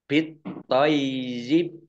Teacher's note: Nah, baknya dibaca sukun karena wakof. Dan kolkolah. bit toyib. Ini pendek, tidak ada tanda panjangnya ya.